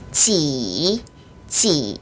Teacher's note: 내려갔다 올라오는 성조 3성입니다.